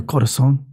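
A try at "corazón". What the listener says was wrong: Corazon. You gotta roll your R's.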